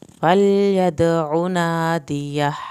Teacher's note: فلید دال کا قلقلہ کریں، عین کی پیش کو نہیں کھینچے، نادیہ آخر میں ہا کی آواز نکالیں.